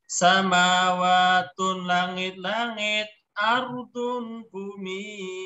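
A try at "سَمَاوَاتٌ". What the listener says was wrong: Dibaca sambung Pak. Samawatun langit-langit. Jangan dipisahkan.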